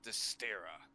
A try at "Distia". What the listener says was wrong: Not with the R at the end.